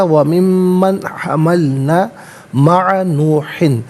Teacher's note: یہاں پر یرملون کا قاعدہ اپلائی ہو رہا ہے، تو ومن من نہیں پڑھیں گے بلکہ ومن من حملنا، نون ساکن کے بعد ہا حرف حلقی ہے تو یہاں اظہار کے ساتھ پڑھا جائے گا